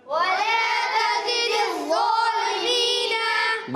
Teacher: زا کو سیٹی سے پڑھیں گے اور ضا کو بغیر سیٹی کے مگر موٹا بھی رکھیں گے